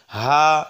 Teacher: এই হা উচ্চারণ করবো আমরা হলকের শুরু থেকে